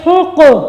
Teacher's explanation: اسی طریقے سے یہ دیکھیں یہاں پہ ہم نے کس چیز کا خیال رکھنا، ہا کا، یہ سینے سے آواز نہ ہے بلکہ حلق سے آواز ہے، ہا قاف، قاف کو موٹا کرنا ہے اور یہ حروف قلقلہ میں سے ہیں۔